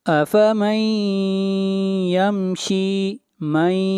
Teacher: نون ساکن کے بعد حروف یرملون میں سے یا ہے، ادغام مع الغنہ ہوگا